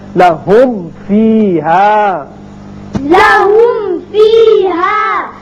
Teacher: لہم فیہا، لہم فیہا یعنی آسان طریقہ ہے کہ آپ ہونٹوں کو ملائیں جب میم ادا کریں، ملا کے پھر آپ فا ادا کیجئے، ہونٹ ملے تو میم ادا ہوا، اور فا کا جو مخرج ہے وہ ہے اوپر والے جو دانت ہیں وہ نیچے ہونٹ سے لگیں گے تب فا ادا ہوگا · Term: میم کا اظہار